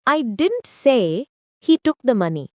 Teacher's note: Stress on say changes the meaning